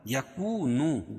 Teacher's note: یکونو دونوں جگہ واو مدہ ہے، ایک الف کے برابر کھینچ کے پڑھیں گے